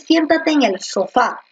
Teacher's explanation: Entonces la mayor fuerza de voz en sofá está en la última. Y como la fuerza de voz está en la última sílaba, es decir, en fa, a eso se le conoce como aguda.